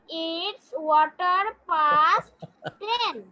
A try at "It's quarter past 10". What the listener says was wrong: ওয়াটার না বাবা, কোয়ার্টার।